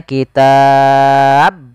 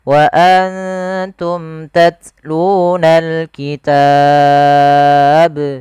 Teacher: Qalqalah yaitu bacaan yang harus dia ada getaran memantul. Maka di sini hati-hati juga di lafal memantulnya huruf ba, tidak boleh kesalahan yang terjadi dalam membaca bacaan qalqalah.